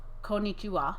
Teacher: has no emphasis on any syllable more than any other syllable ever